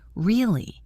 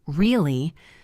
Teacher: If I say, Really? with a high pitch at the end, I am surprised. If I say, Really? with a low, flat pitch, I am skeptical or bored.